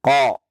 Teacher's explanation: harus ketika mengucapkan huruf qaf dengan tebal ya. Karena dia memiliki sifat tebal, yakni isti'la.